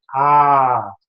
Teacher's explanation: hold on to that sound a little bit longer, just a slight moment longer, and it's a long A